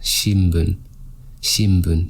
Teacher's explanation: you might hear it in Japan pronounced something like shinbun with an M